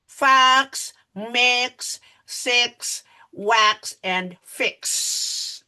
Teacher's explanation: Because the air is going out our mouth. So there is no vibration. And this happens because X is an unvoiced sound. Unvoiced, no vibrations.